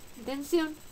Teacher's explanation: el mayor golpe de voz se encuentra en la última Sí esta sílaba termina en consonante n por tanto lleva tilde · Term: palabra aguda